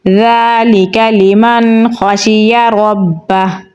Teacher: ذال کو نرمی سے پڑھیں گے اور لمبا پڑھیں گے کیونکہ اس کے اوپر کھڑی زبر ہے